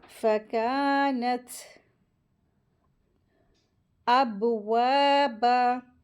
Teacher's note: با کے اوپر سکون لگا ہے تو یہاں پہ حروف قلقلہ ہو رہا ہے، قلقلہ کا رول اپلائی ہوگا.